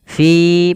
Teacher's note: Fi panjangkan dia mad thabi'i dua harakat.